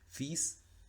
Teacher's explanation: La S por lo general no suena a final de palabra, pero hay excepciones. Fils, en este caso lo que no suena es la L